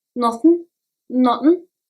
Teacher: For example, in the word nothing, TH is barely pronounced.